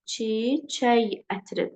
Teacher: Bu zaman bizim k-ımız y səsini ifadə etmiş olur.